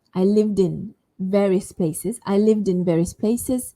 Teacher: The v and then the ed is carried over to the next vowel sound, which is in. So it almost sounds like I said, I lived in, live, and then din. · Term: connected speech